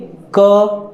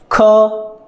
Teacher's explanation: ठीक, जो दूसरा वाला प्रकार है व्यंजन, वो जैसे कि क, आप बोलिए क, तो लास्ट में अ आ रहा है ना, अंत में आप अ महसूस कर सकते हैं, सुन सकते हैं। ख, अंत में ख अ ऐसे आ रहा है ना।